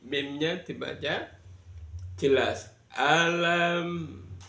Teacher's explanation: Yang pertama di kalimah alam tauro, di alam di sana ada mim sukun bertemu dengan tak. Namanya bacaan idhar syafawi. Mimnya dibaca jelas